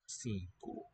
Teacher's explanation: N nasalizes that first vowel.